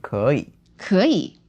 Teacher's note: Okay, 可 以 is cannot is okay, and it would be, because it's two third tones, right? It's second tone and third tone.